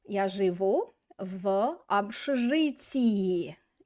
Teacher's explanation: Russians don't really say both of those E's, or at least you can't like hear the difference. Now, I as a teacher will sometimes really say it just so students can hear it, but you really can't hear that that's two E's happening necessarily.